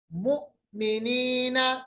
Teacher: یاد رکھیے گا حمزہ پہ جب بھی سکون ہوتا ہے، جزم ہوتا ہے، حمزہ پہ جھٹکا ہوتا ہے. جھٹکے کا مطلب ہوتا ہے آواز کو تھوڑا سا جرک کر کے روکنا ہے